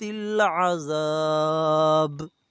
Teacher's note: اشد العذاب، الی مد ہے، 4 الف کے برابر کھینچیں گے، عذاب با پر کلکلا ہے تو یہاں اسے ہلا کر پڑھا جائے گا